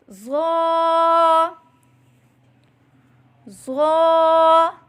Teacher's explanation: زبان کا سر اور اوپر کے دانتوں کے اندرونی کنارے سے ادا کریں